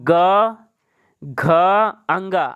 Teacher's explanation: घोष में क्या होता है स्वर ग्रंथियां जो हमारी होती है वह झंकृत होती है झंकार रूप में उत्पन्न होता है ठीक है लेकिन आगोश में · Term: घोष वर्ण